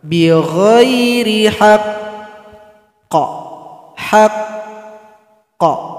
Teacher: Cara berhentinya sukunkan, kemudian tahan 2 detik baru dipantulkan.